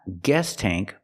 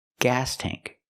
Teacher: The sound is different. We use the ah sound like black cat. It's more open. The tongue is down in the front and up in the back. Gas tank. Not guest tank, but gas tank.